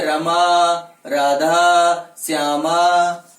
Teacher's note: जब हम उच्चारित करते हैं संबोधन के रूप में, तो उस शब्द का जो अंतिम स्वर होता है वो प्लुत होता है